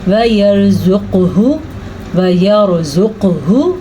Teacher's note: قاف پہ کلکلا کرنا ہے کیونکہ قاف حروف کلکلا میں سے ہے۔